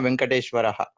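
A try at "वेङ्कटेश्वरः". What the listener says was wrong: Actually, it is not Venkateshwara Swami, it is Venkateshwara. There should be a dirgha in Ve. Not many people generally don't spell it out, but it should be Venkateshwara. Its actual pronunciation is Venkateshwara.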